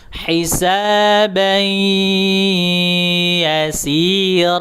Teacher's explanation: Setelah dimasukkan ke huruf ya, baru didengungkan ke arah hidung gitu. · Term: idgham